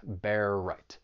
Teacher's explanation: And for pronunciation, the only thing I want to say about, well, just one of the phrases, bear right, you have that overlapping R sound, that final R in bear and the beginning R in right, just allows you to move from one word right into the next.